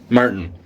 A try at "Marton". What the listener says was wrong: Not spelt the way you think. Ton. Yeah, not Martin. Marton.